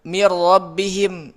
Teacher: Kamil karena langsung masuk ke ro. Si nunnya langsung ke ro. Mir tidak ada gunnahnya lagi. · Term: idgham bila gunnah